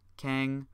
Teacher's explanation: Some of these syllables only have one possible tone associated with them, like keng, which only really ever has a first tone